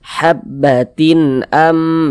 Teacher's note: sehingganya dibaca jelas tak berdengung · dibaca jelas tak berdengung ee tanwin ini kita baca jelas habbatin kemudian tidak didengungkan jadi pendek saja jangan ditahan suaranya pendek saja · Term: izhar halqi